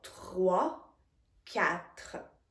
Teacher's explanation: We say it more in the front, and the French R is more in the back of your mouth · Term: French R sound